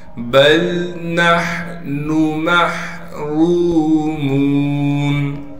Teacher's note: را پر پیش ہونے کی وجہ سے را کو موٹا کر کے بھی پڑھیں گے۔ اسی طریقے سے میم کو بھی ایک الف کی مقدار کھینچنا ہے، آگے واو ساکن ہے اور میم کو واو سے ملا دیں گے۔